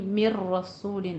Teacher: मिर रसूलिन में इदगाम बिला गुन्ने के, ठीक है, इदगाम ताम करना है, मिन रसूलिन नहीं, मिर रसूलिन, रॉ को पुर पढ़ना है।